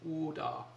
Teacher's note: I don't want a hard D like that, but use the tip of your tongue, and it needs to be dentalized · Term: dentalize the T